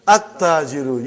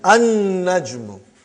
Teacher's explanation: You did not pronounce lam because noon is a shamsi, sun letter.